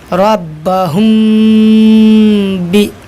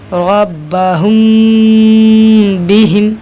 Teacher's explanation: अगर मीम साकिन के बाद बा आए तो मीम साकिन को गुन्ना और इख्फा के साथ पढ़ेंगे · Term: इख्फाए शफ़ी